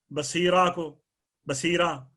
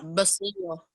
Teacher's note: ये तनवीन वक़फ़ में हज़फ की जाती है, मगर दो ज़बर हो तो इस तनवीन को अलिफ से बदल देते हैं।